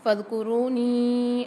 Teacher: فاذکرونی میں فا کو دال کے ساتھ ملائیں گے اور را کے ساتھ واو ساکن آ رہا ہے، یہاں پر ایک الف مدار را کو کھینچ کے پڑھیں گے، نون کے ساتھ یا ساکن ہے اور ساتھ مد بھی آ رہا ہے، اس کو 3 سے 4 الف کی مقدار کھینچ کے پڑھیں گے